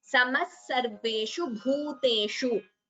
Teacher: instead of samaha, we chant it as samas sarveshu. Extra s is heard. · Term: sandhi visarga sakara